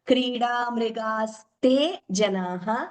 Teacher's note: There is a tendency sometimes to double the ma, but we should not do it. There is no dvitvam.